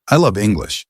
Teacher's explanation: I love English with the emphasis on English